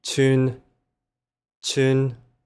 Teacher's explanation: This is the high flat tone